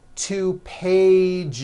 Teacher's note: One page becomes two pages with that voiced Z.